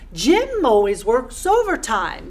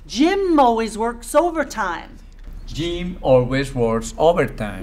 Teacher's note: We have 3 syllables, overtime. And the first syllable is stressed. It's longer, it's louder, it's higher in pitch.